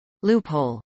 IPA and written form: ˈluːphoʊl (loophole)